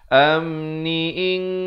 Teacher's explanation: Asalnya in, kena bertemu kaf jadi baca samar, ing 2 harakat. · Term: ikhfa hakiki